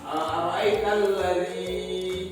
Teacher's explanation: Kalau ya baris yang kasrah bertemu dengan ya itu juga termasuk dalam mad asli. Jadi harus dipanjangkan 2 harakat. Misalnya seperti Bapak bilang tadi, ara'aital ladzi, jadi ini ya baris kasrah bertemu dengan ya.